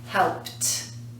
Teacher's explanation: No vibration. So the sound that we add on is t.